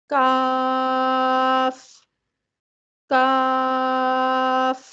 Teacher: زبان کی جڑ سخت تالو پہ لگے گی تو کاف ادا ہوگا۔ کاف کو ادا کرتے وقت ہماری زبان کا بیشتر حصہ تالو کی طرف نہیں اٹھتا بلکہ نیچے رہتا ہے، اور یہ حرف اپنے مخرج سے مضبوطی اور جماؤ کے ساتھ ادا ہوتا ہے۔